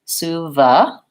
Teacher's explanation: We have vowel schwa there, unstressed.